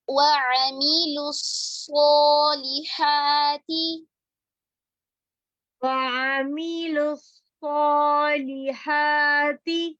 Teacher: میم کی کسرہ کو معروف کریں گے